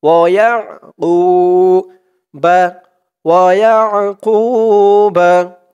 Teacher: আইনের উচ্চারণটা কিন্তু গলার ভিতর থেকে শক্ত হয়ে আসবে